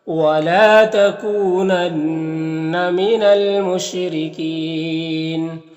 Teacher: لام میں الف مدہ ہے، ایک الف کے برابر کھینچیں گے۔